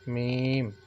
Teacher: ठीक है, खुश्की वाला जो हिस्सा होता है वो बाहर वाली साइड पे होता है। तो मीम जो है दोनों होंठों के बैरूनी खुश्की वाले हिस्से के मिलने से अदा होता है, मीम। ठीक है, मतलब आपने बाहर जो खुश्की वाला हिस्सा है दोनों को, जो होंठों का, उसकी तरफ होंठों का मतलब कि होंठों का आपका रुख थोड़ा बाहर की जानिब हो जाएगा, तो ये हरूफ आपका अदा होगा मीम।